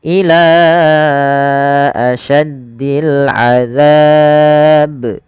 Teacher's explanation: Kemudian pada lafal ila asyaddil azab, pada lafal ila panjangkan lanya sepanjang 4 harakat karena ia ada bacaan mad jaiz munfasil